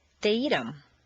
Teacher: the th of them is frequently dropped as is the H in other object pronouns him her